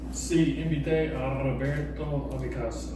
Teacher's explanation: You trilled that R.